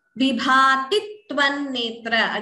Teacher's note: Again, dvitvam here. Before tvan netra, extra tu is heard. So doubling, the tu is doubling. Therefore, we call it dvitvam.